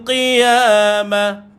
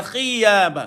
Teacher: Kalau tuan-tuan keluar air, dia jadi khiyamah jadi huruf kha pula. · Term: huruf qaf